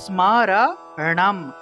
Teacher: মূর্ধন্য এর উচ্চারণটা আসলে মূলত জিউভা উল্টিয়ে করতে হয় তাহলে স্মরণাম এভাবে জিউভা উল্টিয়ে ন উচ্চারণ করবেন তাহলে স্মরণামে ভয়ত